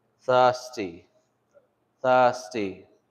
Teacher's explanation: It's like the English thirsty, but obviously without the R.